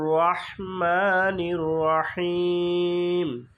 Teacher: মাতে টান হবে আর শেষে হিম এখানে তিন আলিফ টান হবে মাতে এক আলিফ আর হিম তিন আলিফ লম্বা টান